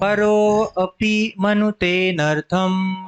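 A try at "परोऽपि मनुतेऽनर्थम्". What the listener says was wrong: देखिए जब आप यहाँ पे एस देखते हैं, मैं सिखा रहा हूँ, तो अ नहीं बोलिएगा, तो हटे बैठेगा नहीं। परोपि मनुते, अनर्थम भी नहीं, परोपि मनुते नर्थम, ऐसे बोलिए।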